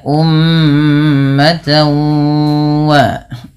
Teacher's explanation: Kemudian pada lafal tawa di sini ada tan, yaitu ta yang berharakat tanwin. Karena bertemu dengan huruf waw, maka suara tanwinnya dimasukkan ke huruf waw. Dan ini kita istilahkan dengan nama idgham.